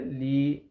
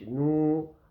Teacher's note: یا کو نہیں کھینچیں گے بلکہ لام کو کھینچیں گے، لام کی آواز کو کھینچیں گے